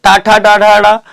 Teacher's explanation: ट वर्ग ट ठ ड ढ ड ये कहां से बोला जाता है मूर्धा से बोला जाता है